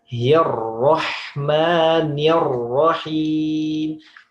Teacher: Banyak mengucapkan ro-nya sudah tebal. Tapi masuk ke hi-nya tipis. Hirroh, bukan hirroh, tapi hirroh, hirroh.